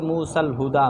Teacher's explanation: وصل میں موسیٰ کا الف کیا ہو جائے گا؟ محذوف ہو جائے گا